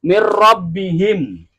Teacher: Kalau ini biam bila guna. yaitu memasukkan huruf ke huruf berikutnya tanpa dengung